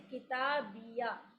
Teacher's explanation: किताबिया का या ज़बर जो है वो वाज़े हो जाएगा इस हा की वजह से, और ये होगी साकिन हालत में ही होगी